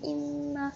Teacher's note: mim dan nun syaddah ni kita sebut keluar daripada rongga hidung. Jadi perlu dengung sebanyak 2 harakat.